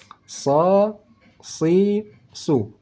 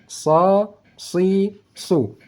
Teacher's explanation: letak pangkal lidah naik ke langit langit saat kita membaca huruf sad makanya bunyi suaranya desis anginnya lebih tebal